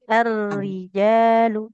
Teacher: huruf rnya jangan terlalu getar